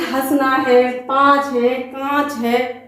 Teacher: अनुनासिक, इनका उच्चारण मुख और नासिका दोनों से मिलकर होता है।